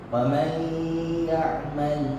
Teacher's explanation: Bukannya disebut wa man ya'mal. Nah, tapi suara nun mati itu masuk terus sama huruf ya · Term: idgham bi gunnah